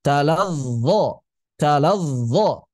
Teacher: Yang namanya rakhwah mengalir. Talazzo, bedanya karena dia jahar, pita suara bergetar.